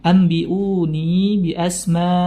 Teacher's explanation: Faqala anbi'uni, nun bertemu ba, nun dirubah atau iklab berubah menjadi bunyi huruf mim sehingga bunyi nunnya sudah tidak ada